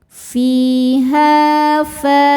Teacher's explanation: Fa mad tabi'i dhahiri sebab ada alif didahului fathah, maka panjangnya 2 harokat.